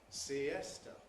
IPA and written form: siˈestə (siesta)